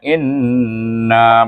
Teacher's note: In itu perhatikan di sini nun bertasydid. Baca suku kata in itu mesti diwajibul gunnahkan, dia dengungkan dia 2 harakat.